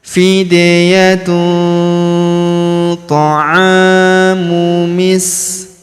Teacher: Huruf a kita panjangkan dua harakat karena terdapat alif di depannya.